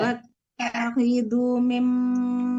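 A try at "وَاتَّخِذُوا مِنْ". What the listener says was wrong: Bunyinya panjang, Bu. Bunyinya panjang, kan ada waw mati di situ. Maunya tidak panjang.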